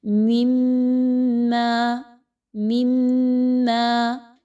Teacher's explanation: اس میں مثال لیجئے، مما، مما، میم میم کے ساتھ مل رہی ہے، میم مشدد ہے، آواز جو ہے وہ ناک کے بانسے سے نکل رہی ہے اور تھوڑی دیر کے لیے آواز ناک میں رک بھی رہی ہے اور ہونٹوں کو ملانے سے میم مشدد کی آواز ادا ہو رہی ہے